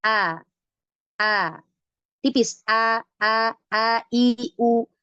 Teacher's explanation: ketika mengucapkan hurufnya sehingga ia dibaca tipis He kalau istigfal ya suara itu tidak naik ke langit-langit ya maka ketika mengucapkan hurufnya dibaca tipis datar ya Nah kemudian bentuk lidahnya pun enggak naik pangkal lidahnya enggak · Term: istifal